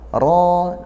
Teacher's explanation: Ro rnya tebal ro yang kedua juga tebal.